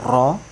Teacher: ro' itu adalah huruf yang bergetar sekali